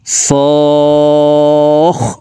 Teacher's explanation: এই সদ হরফকে চার আলিফ টেনে তাসদিদওয়ালা খ কে ধরব